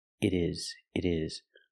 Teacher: change the T to a fast D